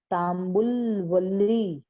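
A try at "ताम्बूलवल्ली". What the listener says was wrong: Not Tambul. Tambula Valli. Each must you see the word. See each word properly. Each letter properly. Tambula Valli.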